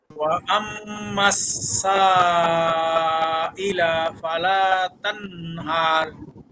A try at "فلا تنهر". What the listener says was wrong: ফালা ফালাতে বেশ টান দেওয়ার দরকার নেই। ফালা তানহার।